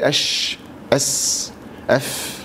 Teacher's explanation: بعدين عندنا رخوه ايه؟ مهموس، رخوه معاه نفس كتير يبقى رخوه ايه؟ مهموس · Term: رخو مهموس